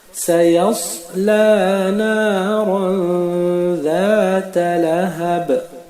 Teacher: Ici aussi, le ba, il est sakin, donc nous appliquons le qalqala.